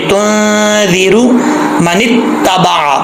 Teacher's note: रा के ऊपर पेश है तो रा पुर पढ़ा जाएगा · जाल जो है इसको पुर नहीं पढ़ना, बरीक ही पढ़ना है